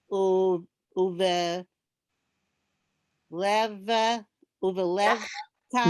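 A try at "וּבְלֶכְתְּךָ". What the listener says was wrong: Lech. That's a chaf. Techa. Uve lech techa.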